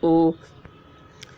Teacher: پیش کو بھی معروف پڑھا جائے اور مجہول آواز سے بچا جائے، تھوڑا بھی نہ کھینچے۔ پیش کی آواز آگے کو جاتی ہے اور ہونٹ گول ہوتے ہیں، جیسے حمزہ پیش او۔